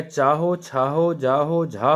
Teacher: चा वर्ण को तालू से बोला जाता है जिसे तालव्य कहते हैं